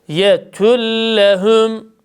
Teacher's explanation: Vev harfinde dudaklarımız yarım ötre şeklinde ileride. Hemzeye basıyoruz ve e şeklinde yethüm. İdğam olunan harfin harekesi üstün olduğu için idgam bila gunnede dudaklarımız ötreden hemen üstüne gerekir.